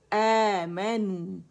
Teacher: حمزہ فتحہ کے ساتھ ہے, تو الف مدہ بن رہا ہے. 2 کاؤنٹس کے لیے آواز اوپر جائے گی. آمنو. پھر ماں میں کیا کریں گے کہ ہمارے دونوں ہونٹ آپس میں جدا ہو جائیں گے فتحہ کے لیے.